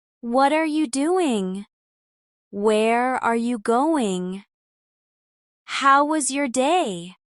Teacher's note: Make sure your mouth opens enough on question words like how and where, and that your intonation rises slightly at the end